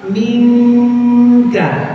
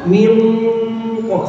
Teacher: Kalau nun ketemu kaf, minka, nun ketemu qaf, min ko, sama-sama cuma beda. Kalau kaf nya tipis, kalau qaf nya tebel.